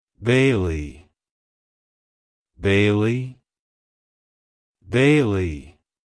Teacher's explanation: to pronounce it correctly emphasize the first syllable B and then the second syllable Le make sure to stress